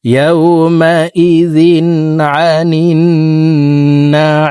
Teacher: তিন আলিফ টেনে মিমকে সাকিন করব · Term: মধ্যে আরজি